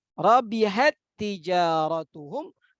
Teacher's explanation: Kemudian pada ta ada hamas, rabihat tijaratuhum, bukan rabihat tijaratuhum. Nah, tidak lagi ditampakkan sifat hamas pada huruf ta sukun yang pertama. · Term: idgham